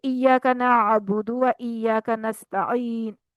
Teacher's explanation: नअबुदु में आइन है, वस्ते हल्का हर्फ है ये, और नस्ताइन में भी आइन है।